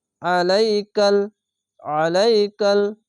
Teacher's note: আইনকে মোটা করে গলা চিপে পড়তে হবে